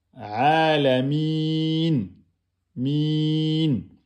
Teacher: On a la lettre ya. La lettre ya ne porte pas de voyelle, elle est précédée de la kasra, c'est donc sa prolongation. Donc vous devez faire 2 temps minimum.